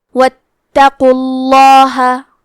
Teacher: تو ہم حرف اللام کو موٹی آواز میں پڑھیں گے۔ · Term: تفخیم